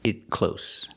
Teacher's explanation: The T in it is a stop T because it's before a consonant.